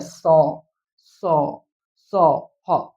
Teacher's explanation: इनका उच्चारण एक प्रकार की रगड़ या घर्षण से उत्पन्न ऊष्म अर्थात गर्म वायु से होता है। ठीक है ना, तो इनका उच्चारण जो है ना जब होता है स, स, ह, तो देखिए एक प्रकार का रगड़ या फिर घर्षण उत्पन्न हो रहा है। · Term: ऊष्म व्यंजन